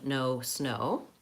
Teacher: the rounded back vowel O